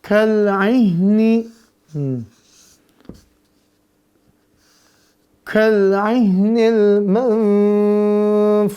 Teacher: Ada ain dan huruf ha. Ainnya tenggorokan tengah, ya, dia di tengah. Ha-nya di tenggorokan bawah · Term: huruf tenggorokan